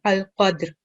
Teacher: You made a really nice sound for dal, sakin, and ra sakin, al-qadr. So we make a jerking sound for dal, and then we have ra.